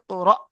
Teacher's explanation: হামজা সাকিন, যেমন ইকরা, ঝাটকা হয়, উপরে সাকিন এসেছে, তাই হামজাকে ঝাটকা দিয়ে পড়তে হয়